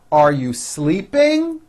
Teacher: notice how my voice goes up at the end of a question